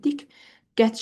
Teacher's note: Diqqət sözündə sözün ortasında qıların qoşanlar rast gəlsə, tələffüz zamanı diqqət şəklində. Yəni qlardan biri kar samit kimi tələffüz olunur.